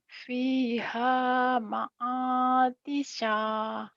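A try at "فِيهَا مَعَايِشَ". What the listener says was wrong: Fiha ma'ayisha. Bukan ma'atisa. Titiknya di bawah.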